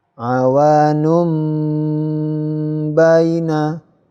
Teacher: Berikutnya yang terakhir, ini domah tanwin bertemu dengan ba. Domah tanwinnya ini berubah menjadi suara mim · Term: iklab